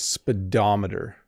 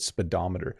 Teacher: it's said very quickly you don't over pronounce the syllables so the O in the middle does not make an o sound it's speedometer so it makes like an a sound right speedometer